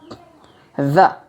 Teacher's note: Penyebutannya berbeda karena dia meletakkan ujung lidah di antara gigi atas dan gigi bawah